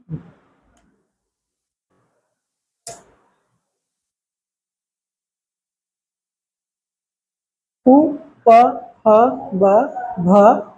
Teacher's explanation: उ, प, ह, ब, भ इतना ओष्ठ से हो रहा है, दोनों ओठ